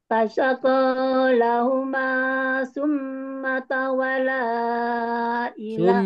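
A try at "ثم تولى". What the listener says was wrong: Summa tawalla ada tasdid. Summa tawalla.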